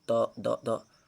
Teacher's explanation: आप बोल के देखें, त, द, द, जीभ जहाँ जाके लग रही है वह दंतस्थ बोल, दंत से बोले जाते हैं। दंत पे जाकर टकराती है हमारी जीभ, तो इस प्रकार इसे हम दंत वर्ग कहते हैं इसे।